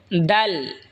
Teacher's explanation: জিহ্বার আগা সামনের ওপরের দুই দাঁতের গোড়ার সঙ্গে লাগাই উচ্চারণ হবে দাল। এই তা যেখান থেকে উচ্চারণ হয়েছে সেখান থেকে এই দালও উচ্চারণ হবে।